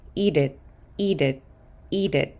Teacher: going to pronounce this t as a fast D sound